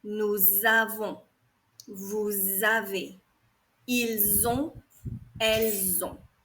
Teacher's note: Here you have to liaise the S and the A, and the sound of it is like a Z sound.